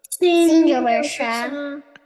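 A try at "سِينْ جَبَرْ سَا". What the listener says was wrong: I said sa, not sha. Sa and sha, two completely different sounds. So don't make wrong sound here. Sin jabur sa.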